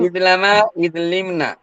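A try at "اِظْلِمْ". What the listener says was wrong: আপনার তো লামের উপর জবর হচ্ছে, লামের উপর জের হবে, ইজলাম না ইজলিম। ইজলিম, ইজলিমা, ইজলিমু, ইজলিমি, ইজলিমা, ইজলিমনা, এভাবে।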